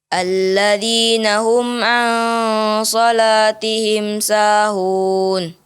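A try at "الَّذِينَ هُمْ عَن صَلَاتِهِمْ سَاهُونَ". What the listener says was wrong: Ya, tinggal lagi menambahkan dengungnya. Alladzina hum ya, tinggal lagi menambahkan dengungnya.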